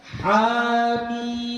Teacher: Kalau ha ini panjangnya tetap dua ya. Ini dua harakat. Ya. Jadi dibaca hamim, 6 harakat mimnya. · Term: mad lazim harfi mukhaffaf